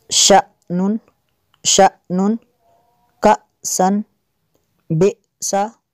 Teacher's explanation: حمزہ ساکنہ کو ہمیشہ جھٹکا دے کر پڑھیں گے